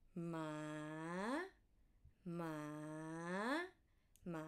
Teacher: With a rising tone, how do you pronounce it? From low to high.